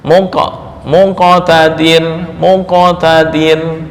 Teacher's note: maka qalqalahnya lebih dekat ke bunyi dommah